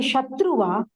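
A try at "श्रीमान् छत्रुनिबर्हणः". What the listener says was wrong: Chatru. Like Chatra, say a Cha there. It is actually Shatru, but there is a Sandhi. With the Sandhi, it becomes, even when shlokas, when we say, Iti Shri Chankara Bhagavataha Kritau, we say Chankara. That is because of the Sandhi that happens.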